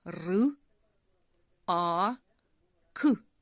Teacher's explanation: перший звук р - це твердий приголосний звук